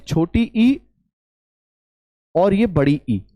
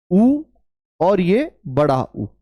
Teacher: छोटी ई और यह बड़ी ई इन्हें उच्च या संवृत स्वर भी कहा जाता है